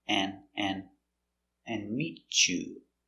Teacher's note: And we don't pronounce a D. ND, don't pronounce a D.